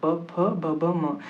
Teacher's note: यानी इन सभी का उच्चारण स्थान क्या होगा? ओष्ठ होगा। यानी ये लिप से बोले जाएंगे।